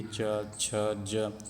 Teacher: तो हमारा जीभ तालु पर जाके टच करता है, लगता है, तब हम उसको बोल पाते हैं। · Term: तालव्य वर्ग